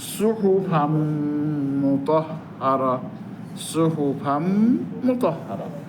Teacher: ওই যে ফান যে নুনটা, তানবিনের নুনটা, ওইটা মিম হয়ে গেছে, মিম দুইবার উচ্চারণ হবে।